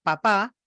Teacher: mi tono empieza alto y termina abajo